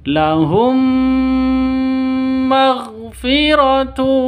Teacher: mim mati bertemu dengan mim cara bacanya masuk ke mim Mim yang kedua disertai dengung dua ketukan karena bacaan idgham mimi atau idgham mis mislain.